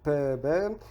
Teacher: E daí nós temos as labiais. Bilabiais, como p, b, e as labiodentais, como f, v.